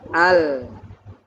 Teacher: Karena ujung lidahnya nempel ke atas maka suaranya keluar dari tepi lidah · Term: huruf lam